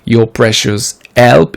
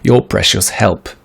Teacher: Ici, on aurait bien aimé entendre le H aspiré.